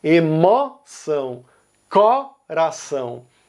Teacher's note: os estados do Nordeste, que são Bahia, Pernambuco e Ceará, eles vão pronunciar isso com o aberto